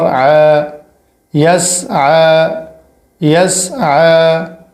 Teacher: یا سین زبر یس، عین کھڑا زبر ع، یس ع، عین کے اوپر کھڑا ہے اور یہ والی یا نہیں پڑھی جائے گی، اور عین پر جو کھڑا ہے یہ الف جتنا کھینچا جائے گا، زیادہ نہیں۔